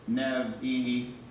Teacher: Nevi'im is a break, a glottal stop.